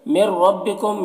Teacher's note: یہاں پر ادغام تام ہو رہا ہے، بغیر غنہ کے پڑھیں گے، نون کو را سے ملا کر، اور را کو پور پڑھیں گے۔